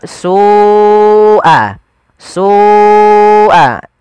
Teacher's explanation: Kemudian melafal su'al azab, Ada lafal su, ada mad wajib muttasil, yaitu lafal su wajib kita panjangkan sepanjang 4 atau 5 harokat